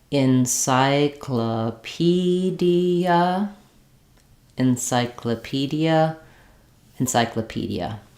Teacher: you're going faster on the unstressed syllables and stretching a little bit more on the stressed syllables